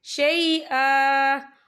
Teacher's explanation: وقف کی صورت میں ایک زبر پڑھا جائے گا، 2 زبر نہیں پڑھے جائیں گے